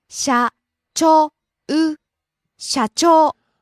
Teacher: rising on the second syllable Cho.